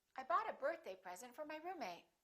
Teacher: when we have two nouns together compound a noun we stress the first word